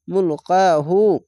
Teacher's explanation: উল্টা পেশে এক আলিফ টেনে পড়বেন